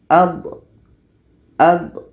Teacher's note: Dha ini letaknya pada salah satu tepi lidah atau keduanya bertemu dengan gigi geraham atas. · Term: rokhawah